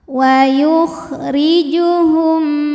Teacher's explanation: Ra ini dibunyikan secara tarqiq sebab ra berbaris di bawah yaitu barisnya kasroh, maka dibacanya tipis, pangkal lidah datar.